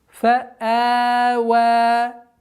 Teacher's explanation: Здесь у нас фа'а, четкое ясное произношение звука хамза, и удлинение подчиняется хамзе в размере двух огласовок. Итого получается фа'ава.